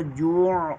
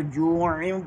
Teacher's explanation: یہاں اگر وقف کریں گے تو جوع پڑھیں گے، اگر ملا کر پڑھیں گے تو جوعم پڑھیں گے۔ کوشش کریں کو ملا کر پڑھیں، کیونکہ لام ہے، لام پر وقف جائز نہیں ہے۔